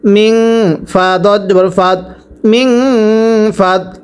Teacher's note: এরপরে মিম নুন জের মিং, নুন সাকিনের পরে ফা ইকফার গুন্নাহ করতে হবে।